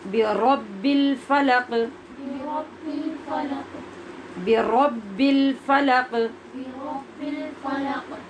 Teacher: آپ نے اس کو بربی کہنا ہے، یعنی را کا جو اپنا مخرج ہے، جو ایک لڑکھڑاہٹ پیدا ہوتی ہے اور مشابہت تکرار پیدا ہوتی ہے را کی آواز میں، وہ پیدا ہونی چاہیے، تو پھر را ٹھیک ادا ہوگی۔